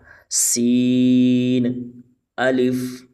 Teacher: سین میں ہم نے سیٹی کی آواز نکال کر پڑھنا ہے